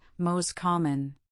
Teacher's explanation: In the phrase most common, the T in most frequently disappears